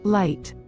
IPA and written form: laɪt (Lite)